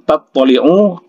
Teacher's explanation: to-nya harus ditahan karena to ini bertasydid